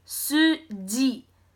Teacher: we pronounced the J more closer to your teeth · However, we do have a little bit of a j in English. However, in Korean, instead of going j, j, j, we pronounce the J more closer to your teeth, and some even pronounce it exactly on the teeth without using any tongue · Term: korean j / CH sound, Korean J/CH sound